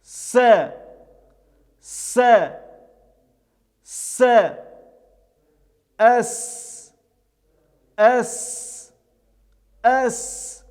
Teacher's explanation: Следующая буква — это буква Синун. Звук буквы Син произносится, когда кончик языка прижимается к внутренней стороне передних нижних зубов и приближается к верхнему небу. Этот звук является щелевым, глухим, без участия звука произносится, и звук является мягким, читается через Читается также он четче, чем в русском языке.